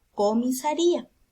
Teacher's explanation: Porque la mayor fuerza de voz está en la penúltima sílaba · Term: grave o paroxítona